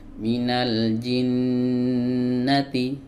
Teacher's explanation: fathahnya tidak dipanjang tapi nunnya ini yang dipanjang ditahan maksudnya ya.